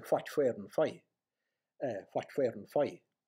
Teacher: This bilabial, voiceless bilabial fricative is likely to be heard by English speakers as an F.